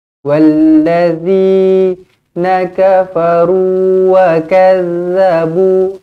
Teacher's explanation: Ingat huruf zal macam mana cara makhrajnya adalah di hujung-hujung lidah. Kita keluarkan lidah sedikit, bukan wallazi.